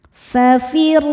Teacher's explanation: Cara bacanya ro dibaca dengan tebal. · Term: tafkhim